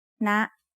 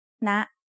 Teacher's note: High tone starts at a high pitch and Rises very slightly